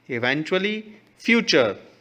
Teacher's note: same इवेंचुअली, देखिए यहाँ पर CH नहीं है लेकिन TU का जो साउंड है वो भी सेम CH च जैसा साउंड निकल रहा है